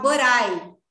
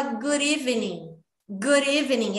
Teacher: Mas esse D que o nativo fala é mais parecido com R, que a gente fala em português